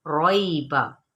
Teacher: रॉइबा, यहाँ पर याइलीन का कायदा हो रहा है, नरमी से पढ़ना है, लेकिन रॉ पुर पढ़ा जाएगा